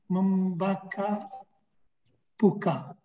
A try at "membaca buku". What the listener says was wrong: Not membakar, sound of C is C. Membaca buku. Buku.